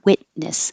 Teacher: witness, you won't hear the T. Your tongue will go to the T position and then make the N